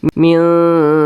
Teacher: Jadi bacanya disamarkan dan juga didengungkan. Akan tetapi bunyi samarnya dia lebih dominan. Mildu. Kemudian di sini ada huruf wa sukun. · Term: ikhfa hakiki aqrab